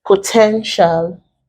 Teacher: and then potential, we stress it on the second syllable.